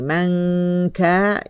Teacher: Ya, kita dengung, kita gantung dulu lidah kita. Kemudian dengung 2 harakat. Barulah kita masuk kepada ka. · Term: ikhfa hakiki